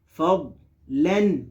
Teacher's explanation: دعاد میں قلقلہ نہیں ہے